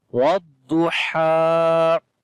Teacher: ha sound should be from the middle of the throat.